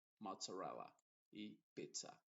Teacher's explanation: te das cuenta ahí se dice con una t y una s